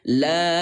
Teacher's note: Cara bacanya yaitu dipanjangkan 4. 4 ini artinya 4 ketukan. Contohnya 1, 2, 3, 4.